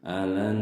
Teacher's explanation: gunah musyaddadah kan nun bertasydid. Jadi ini harus ditahan ya, mendengung.